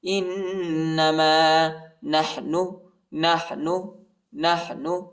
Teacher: انما حمزہ کو نون کے ساتھ ملائیں گے اور غنہ کریں گے